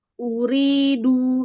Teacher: Uriduidu itu ada ya sukun sebelumnya kasrah mad thobi'i dibaca tipis dibaca dua harakat dan huruf rnya dibaca tipis karena rnya berharakat kasrah